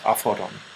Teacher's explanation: And this is because tau, or theta, is an aspirated tau. Phi is an aspirated pi.